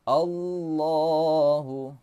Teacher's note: Lafaz la-nya ini, huruf la-nya ini di panjangkan. Allahu, panjang dua harakat, dua harakat artinya dua ketukan